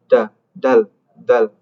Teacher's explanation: ujung lidah dengan belakang gigi seri atas ditekan tapi bedanya jadi seperti da tidak ada angin yang keluar ya da dal dal.